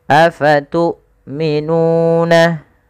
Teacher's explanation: ketika kita melafalkan tu'minuna, hamzahnya harus ditahan suaranya dan ditahan nafasnya. Afatu'minuna, panjangkan nu sepanjang 2 harakat karena ia mad tabi'i.